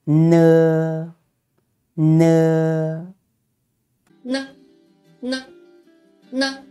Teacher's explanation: this sound is not aspirated just as in the English word nurse